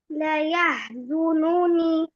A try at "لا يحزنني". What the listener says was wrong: Ni at the end stretch. لا يحزنني.